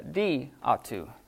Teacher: So when you're saying this really fast, those vowels together have to be dropped.